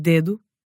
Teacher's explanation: There was D, as in dedo, It's a D articulated with the tip of your tongue against your front teeth